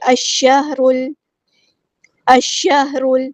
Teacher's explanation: یہ لام شمسی ہے، اس لیے اس کو پروناؤنس نہیں کریں گے